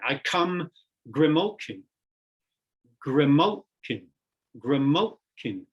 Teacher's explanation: for example listen to this line i come grimochi gremolkin gramolkin where we have three syllables the first and the third are soft and the middle one is stressed